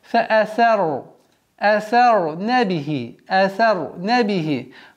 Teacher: Ра здесь твердо должно произноситься